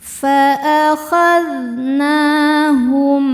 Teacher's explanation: mim sukun dibaca izhar atau jelas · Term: izhar syafawi